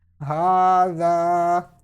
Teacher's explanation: you need to stretch khada zabar equal to 1 second, just like madda letters